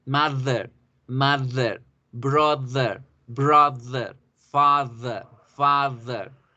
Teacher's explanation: Ahora aprendimos que mother ya no se dice con D de dedo, sino dice con D dental